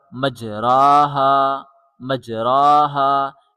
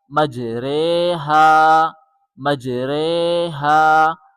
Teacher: میم جیم زبر مج، میم جیم زبر مج، را کھڑی مع امالہ رے، را کھڑی مع امالہ رے، مجرے، مجرے، ہا الف زبر ہا، مجریہا، مجریہا، وقفاً مجریہا۔ یاد رہے یہاں امالہ کی وجہ سے حرف را کو باریک پڑھا جائے گا، موٹا نہیں پڑھا جائے گا